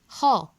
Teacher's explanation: ह, जिह्वा प्लस कंठ से श्वास पर जोर देके होता है।